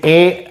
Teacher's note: कंठाची मदत घ्यावी लागते, टाळूची मदत घ्यावी लागते. ए कंठातून उच्चार येतो ए, ऐ आणि जीभ मधला भाग जिभेचा वरती टाळूला लागतो. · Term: कंठ तालव्य